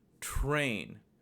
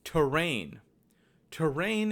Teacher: train has a tr combination which gives one syllable sound train there is no vowel between the t and the r if there was a vowel then you get the sound terrain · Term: consonant clusters